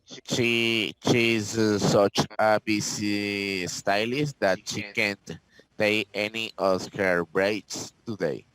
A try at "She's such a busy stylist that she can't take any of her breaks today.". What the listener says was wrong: Correct. Thank you.